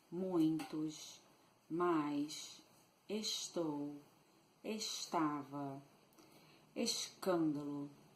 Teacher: the influence of the Portuguese accent can be perceived by means of the pronounced S. We shush a lot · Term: sh sound